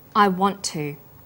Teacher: the final sound in want is held slightly longer on the tongue then to is pronounced the tert sound is pronounced only once I want to this · The t sound is pronounced only once. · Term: consonant + same consonant linking, consonant plus same consonant linking